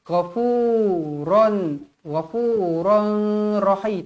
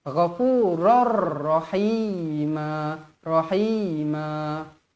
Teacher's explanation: tanwin yang tidak selari bertemu dengan huruf ra hukumnya Idam Bila Ghunnah memasukkan tanpa dengung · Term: idgham bila gunnah